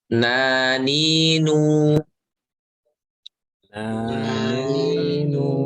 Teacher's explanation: Lihat, sifat ini terdengar gunahnya ya, karena ada gunah. Pengucapannya artinya harus disertai keluarnya dengung, gitu, suara dari hidung. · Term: gunnah